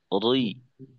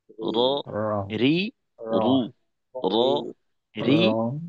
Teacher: আমরা অনেক সময় জিহ্বার আগার উল্টা পিঠ ব্যবহার করি, অর্থাৎ নিচের দিকের, নিচের দিকটা। তো র এর উচ্চারণে কিন্তু আমাদের জিহ্বার আগার নিচের দিকটা ব্যবহার করব না, আমরা জিহ্বার আগার উপরের দিকটা ব্যবহার করব, জিহ্বার আগার উপরের রি।